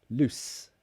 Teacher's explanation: that is the S sound it's an unvoiced sound